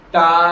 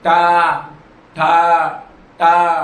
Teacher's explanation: जीभ उल्टी होकर मुंह की छत को छूते हैं।